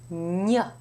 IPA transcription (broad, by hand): ɲ